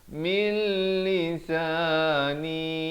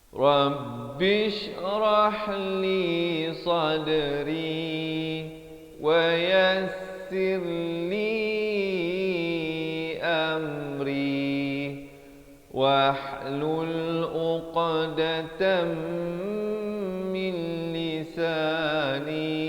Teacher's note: idgham bila gunnah nun mati bertemu lam masuk tanpa dengung